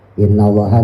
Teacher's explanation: Innallaha nunya tasdid guna tahan minimal 2.